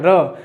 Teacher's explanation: जीभ जो थी तालु को लुढ़क करके छू रही थी, तो उसे हम कहते हैं लुंठित व्यंजन। वो मात्र एक है, वो है आपका र।